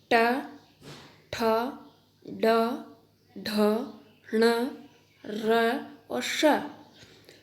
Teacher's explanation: इनका उच्चारण स्थान मूर्धा है। इन्हें मूर्धन्य कहा है।